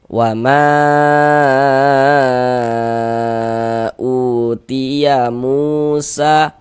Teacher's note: Maka huruf yang memiliki tanda baca dhammah ini dibaca panjang. Sebenarnya mu dibaca panjang. Kalau ini namanya mad tabi'i, dibaca dengan panjang 2 harokat.